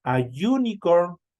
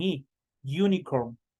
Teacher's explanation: esta u se transforma en y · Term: sonido consonántico